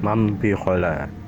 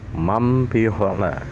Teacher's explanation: Contoh hukum iqlab adalah mambikhola. Nah, di sini nun mati bertemu ba dibaca mim jadi mim ya